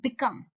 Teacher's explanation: दो सिलेबल होंगे इसके अंदर, और इसका पैटर्न क्या होगा? Unstress followed by stress. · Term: आयम्बिक